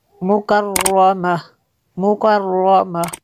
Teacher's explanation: گولتا ہا میں تبدیل کر لیں گے